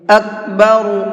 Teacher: را کو منہ بھر کے پڑھیں گے